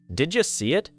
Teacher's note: Again, the final sound of one word collides with the beginning of the next. Did ends with a D sound. You begins with a Y sound. When those sounds meet, they can produce a J sound. That is why did you often sounds like didja.